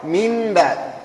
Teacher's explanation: القلب أو الإقلاب لغة التحويل، تتحول. اصطلاحا هو قلب النون الساكنة أو التنوين ميما. النون كانت نون، وش ولات ميم.